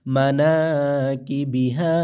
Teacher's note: বা জের বি কিবি হাহা আলিফ জবর হা মানা কি বিহা জবরের বাদ বাম পাশে খালি আলিফ মদের হরফ এক আলিফ টেনে পড়তে হবে